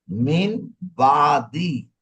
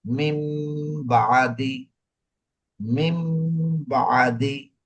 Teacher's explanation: ইকলাব, ইকলাব, ইকলাব হচ্ছে ওই যে বাদ, যদি নুন সাকিন তানবিনের পরে ইকলাব ওই বা আসে, তাইলে এই যে এখানে দেখো আসে গেছে, মিম গুন্না করতে হবে। নুন সাকিন এবং তানবিনের পরে যদি বা আসে অন্য শব্দে, তাইলে ওখানে কি করতে হবে মিম গুন্না করতে হবে।